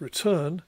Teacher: in the word return we've got the opposite in other words the second syllable is louder and longer and the main pitch movement is now on the second syllable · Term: lexical stress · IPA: [ɹɪˈtɜːn]